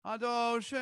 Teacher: Make it more of a rounded O.